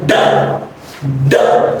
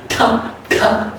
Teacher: da means it's a voice consonant sound, but at the same time, if I say ta, ta, I push it outside, so it becomes unvoiced consonant sound